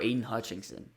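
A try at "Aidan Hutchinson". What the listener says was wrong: Hutchinson, not Hutchinson. It's Hutchinson. No, it's Hutchinson. There's no G.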